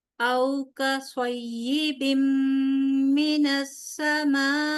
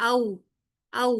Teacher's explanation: یہاں پہ واو لین ہے لہٰذا اس کو تیزی سے پڑھیں گے، اس کو کھینچیں گے نہیں